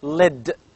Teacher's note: is called as lateral liquid because the air goes out of both sides